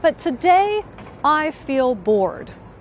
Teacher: The T sound in but and the T sound in today come together into one sound.